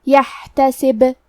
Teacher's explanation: آخری میں حرف البا ہے، اگر ہم یہ کلمہ پہ رکے تو با پہ جزم سے رکیں گے، تو کیونکہ با بھی حروف القلقلہ میں سے ہے تو ہم یہ حرف کو ہلاتے ہوئے یہ کلمہ پہ رکیں گے